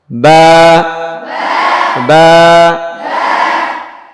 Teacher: না, ঠোঁট ধরবেন, মিলাবেন আর ছাড়বেন। বা বা, ভিজা অংশ থেকে ঠোঁটের বা